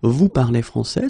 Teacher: But in many situations, especially when we talk, we can keep the same order, we just need to raise the voice at the end